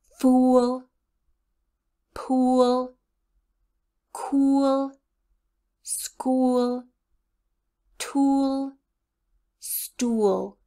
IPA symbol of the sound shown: u